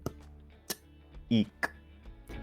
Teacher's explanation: Stops bloquean el flujo del sonido como sucede en p y k.